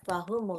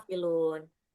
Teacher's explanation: waktu mengucapkan ghafilun, gha ini agak ngerak dikit ya.